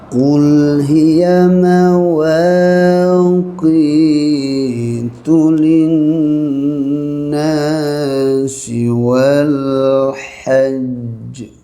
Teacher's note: Qul, jaga qaf tebal, keluarkan lam mati.